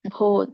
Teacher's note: ದೊಡ್ಡ ಭ ಇದೆ ಮತ್ತೆ ದೀರ್ಘ ಇದೆ